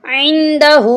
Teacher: عین کو ہم حلق سے نکالیں گے